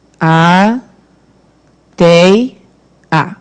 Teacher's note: Sempre vai ser assim a separação silábica quando nós tivermos esse tipo de formação. Duas vogais, né, nos extremos, a do meio é semivogal. · E quando a gente fala tei, né? O E é forte e o I fica junto. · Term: ditongo